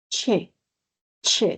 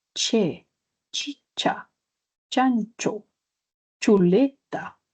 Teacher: La fricada, claro, la fricada, recordemos, es como si fuera una oclusión y una fricción simultánea